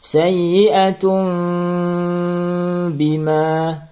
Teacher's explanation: Maka cara bacanya adalah tanwin, bunyi tanwin berubah menjadi bunyi mim mati yang ringan disertai dengung 2 harokat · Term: iklab